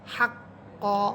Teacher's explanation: কফ জবর ক, জিহ্বার গোড়া উপরে তালুর সাথে লাগবে